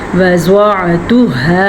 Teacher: ہا کے مخرج کو بھی آپ نے واضح کر کے پڑھنا ہے، ہا یا خا نہیں پڑھنا